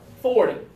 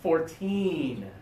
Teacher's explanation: when we're talking about the smaller number I like to put the accent on the last syllable and the bigger numbers the accent is on the first syllable